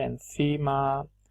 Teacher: el fonema N en coda se asimila al punto de articulación de la consonante siguiente.